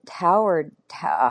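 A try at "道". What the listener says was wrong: pronounce it Dow. Dow. As if a D, but then I'm from Chicago, so like T's and D's, they're interchangeable.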